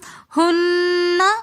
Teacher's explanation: ہنہ کے اندر آگے نون مشدد ہونے کی وجہ سے ہم ہنہ غنہ کر کے پڑھیں گے